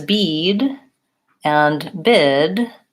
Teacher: both of those vowel sounds are held for a longer duration because there's a voice sound at the end